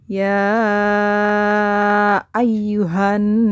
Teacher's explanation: cara bacanya adalah dengan mendengungkan Nun yang bertasydid sebanyak 2 harokat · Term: guna